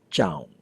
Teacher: The word jaun, pronounced with a high tone, means monastery or school, but the word jaun, which sounds a little softer with a trailing vowel, means cat